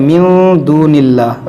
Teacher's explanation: یہاں پر اخفا کریں گے، ناک میں آواز لے آئیں گے